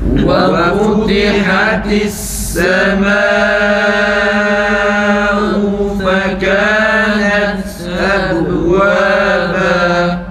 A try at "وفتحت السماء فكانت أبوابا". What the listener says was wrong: Daha önce duruyoruz, nefesi kesiyoruz, sonra ta harfini okuyoruz arkadaşlar. Şiddet sıfatına dikkat edelim. Bir de وَفُتِحَتِ السَّمَاءُ hemzeyi uzatmayalım. Hemze boğazdan çıksın, yalnız uzatmayalım. وَفُتِحَتِ السَّمَاءُ yalnız uzatmayalım.